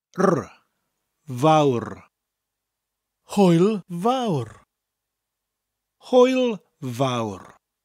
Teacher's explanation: the vowel bit is pronounced like the English word vow but with that little bit of a rolling R at the end of it